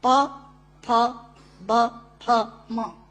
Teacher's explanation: दोनों होंठ मिलाकर बोले जा सकते हैं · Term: ओष्ठांग